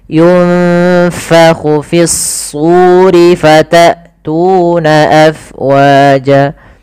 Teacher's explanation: Lafal su, tu, wa harus sama. Di sini kita namakan dengan mad tabi'i, panjangnya 2 harakat. Hati-hati jangan terlalu panjang juga.